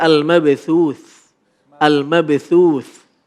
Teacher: Cara membacanya adalah ketika waqaf keluar nafas sedikit. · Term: sifat hamas